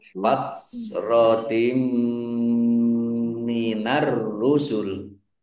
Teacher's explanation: Kasroh tanwin bertemu dengan huruf mim, bacaan idgham bi gunnah. Idgham masuk bi dengan gunnah mendengung. · Masuk dengan mendengung, yaitu mendengung mim, ditandai mimnya ada tasdidnya. Mimnya dibaca mendengung, ditahan kira-kira 2 harokat biar tampak dengungannya.